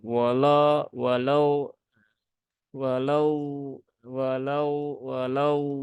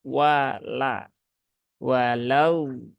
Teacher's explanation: menebalkan huruf wau huruf huruf wau dan juga huruf lam pada kata wala